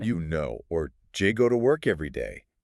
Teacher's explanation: When spoken quickly, do you almost never keeps its clear 2-syllable sound. It gets compressed. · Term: the do-you blending